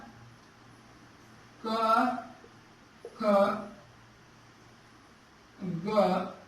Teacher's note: कवर्ग को जो है कहां से उच्चारण होता है? कवर्ग का उच्चारण जो होता है कंठ से होता है।